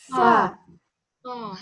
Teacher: Harus mengalir pisan. Fa ar-rokhawah. Mengalir.